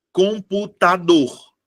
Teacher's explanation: A minha sílaba tônica é a última.